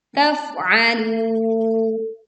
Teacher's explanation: Kita menekan huruf fa sukun dengan mengalirkan suara dan anginnya.